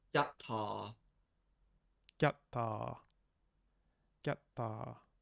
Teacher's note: Maybe it could be just a voiceless palatal stop.